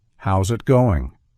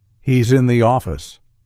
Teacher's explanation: the S transforms into a z sound when paired with a following vowel